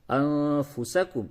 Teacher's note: وتنسونا، حمزہ نون زبر ان، فا پیش فو، سین زبر سا، کاف میم پیش کم، انفسکم، اس جگہ بھی نون ساکن کے بعد فا ہے، اخفا ہوگا